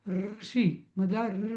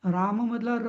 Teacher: ऋषीमधला मूर्धन्य आहे आणि रामातला र हा दंतमूल आहे. म्हणजे दाताच्या वरती त्याची जीभ चिकटते.